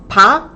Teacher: Instead of first time to start the word. When we first open the mouth, pa, there's a little more air.